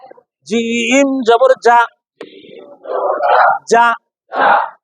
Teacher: জিম জিহ্বার মাঝখান থেকে শক্ত ভাবে